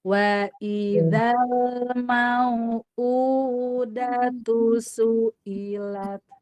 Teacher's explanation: Jadi dijaga konsisten dari pangkal semua hamzah, pangkal tenggorokan.